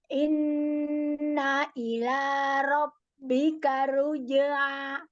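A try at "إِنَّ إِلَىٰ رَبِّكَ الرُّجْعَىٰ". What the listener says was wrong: Tahan ro tasdidnya, ro sukun tasdidnya tahan. Rabbikar ruj'a. Dilatih huruf ainnya ya.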